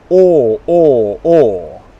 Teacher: So, long English vowel sound, or. My lips are rounded. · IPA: ɔː